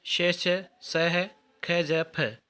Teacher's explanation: जिन व्यंजनों के उच्चारण में 2 उच्चारण अवयव इतनी निकट पर आ जाते हैं कि बीच का मार्ग छोटा हो जाता है, तब वायु उनसे घर्षण करती हुई निकल जाती है। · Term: संघर्षी व्यंजन